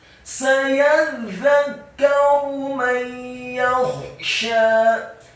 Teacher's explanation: Sayadzakkaru, za-nya ditasydidkan tipis, lidahnya agak keluar sedikit, fathah satu harokat, kemudian kafnya juga ditasydidkan tipis fathah satu harokat, dan ra-nya dibaca dhamma tafkhim atau tebal.